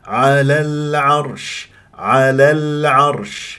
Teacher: العين مرققه الراء بعدها مفخمه